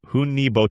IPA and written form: ˈhʌni ˈbɒtəl (Honey Bottle)